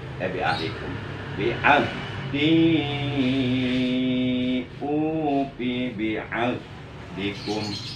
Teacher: Ha besar adanya di adnal halki, di pangkal tenggorokan atau tenggorokan bagian bawah.